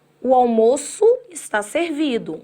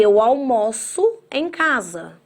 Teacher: O almoço, o substantivo, a gente pronuncia fechado. Eu almoço, o verbo, a gente pronuncia aberto.